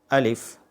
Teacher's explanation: الف نرمی سے پڑھیں گے، حلق کے نیچے سے